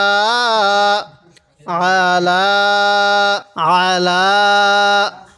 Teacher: অনেকে আমরা এই আইনটাকে হামজা পড়ি এটাকে আইন পড়বো একটু চাপ দিয়ে পড়বো